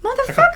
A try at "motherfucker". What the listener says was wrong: It's the emphasis on the wrong word. It's on the wrong syllable.